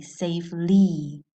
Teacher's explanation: in this case the y sounds like a long vowel sound it sounds like an e safely you hear the e safely so some words have two